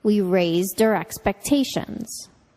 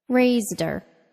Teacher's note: we deleted the H in her, then connected the speech from raised and which became raised-er. Raised-er. Check out the lesson on H deletion for more practice and explanation.